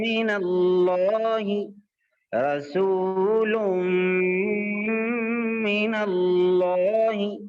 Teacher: نون کی آواز جو ناک میں جا رہی ہے وہ ناک میں جاتے ہوئے میم سے مل جا رہی ہے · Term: ادغام بالغنہ